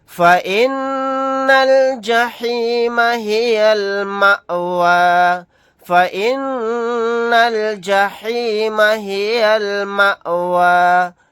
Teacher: حمزہ ساکنہ پر جھٹکا لگا کر پڑھیں گے ، آیت کرنے کی صورت میں مأوى اس طرح پڑھیں گے،